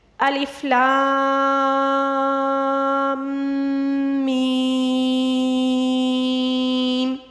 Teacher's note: لام اور میم کے درمیان میں نے غنہ کیا میم مشدد کا، اور پھر آخر میں میم کو کھینچا کیونکہ اس کے اوپر مد متصل ہے · لام کے ساتھ لام کو کھینچنا ہوگا کیونکہ اس کے اوپر مد متصل ہے، اور اس کے بعد جو ہے میم مشدد کے ساتھ، میم کے اوپر تشدید ہے تو لام کو میم مشدد کے ساتھ ملانا ہوگا، اور میم مشدد جو ہے اس کا غنہ ادا کرنا ہوگا، اور پھر اس کے بعد یہ والی بڑی مد جو ہے، یہ مد متصل، اس کو ہم نے ادا کرنا ہے۔